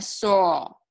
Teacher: It's not touching anything. It's just air going over your tongue through your teeth on sore